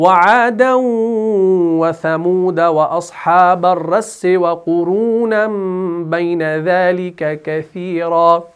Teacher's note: ہاں، لیکن جب آپ پڑھیں گے وعادا وثمود وقف کی صورت میں، لیکن جب وقف نہیں کریں گے تو دال کے اوپر سکون کو ہٹا کر زبر دینا ہے